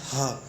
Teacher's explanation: हा बोलते हैं तो हवा काफ़ी तेज मुंह से निकलती है